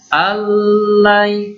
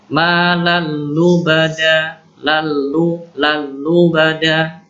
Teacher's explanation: nun sukun ketemu lam, ini langsung masuk idgham bila gunnah tanpa dengung